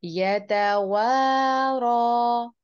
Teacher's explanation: रॉ को हम पुट करके भी पढ़ेंगे और दो हरकत तक इसको बढ़ाएंगे भी। पीछे वाव के ऊपर अलिफ मद्दा है, उसको भी हम दो हरकत तक बढ़ा के पढ़ेंगे।